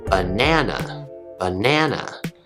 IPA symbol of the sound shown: ə